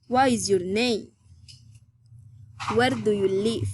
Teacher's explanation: Friendly interest, politeness, rising intonation.